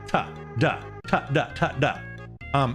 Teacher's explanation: Your tongue doesn't move. You do the same thing. The only thing that changes is the voicing